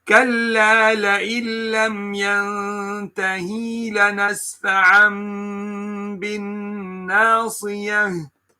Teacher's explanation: So you hold that the gunna here, while you change the noon into a meme due to the fact that there is ba coming after it. You change that, and at the same time you pronounce it, you read it with the gunna. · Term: iqlab